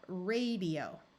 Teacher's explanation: notice this a still takes the long a sound at the end of a syllable